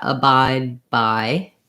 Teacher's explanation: So when you hear that, abide by, again, I do my stopped D and I just release into the B. So abide, I close off for the D, then I shut my lips, by, abide by.